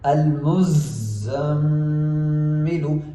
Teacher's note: یہاں پہ کچھ لوگ اسی طرح پڑھ جاتے ہیں المزمل، جبکہ المزمل نہیں، زا کے اوپر بھی تشدید ہے، ہم نے زا پر بھی زور دینا ہے۔ المزمل، میم کے اوپر تشدید ہے، ہم نے میم کے اوپر غنہ کرنا ہے ایک الف کے برابر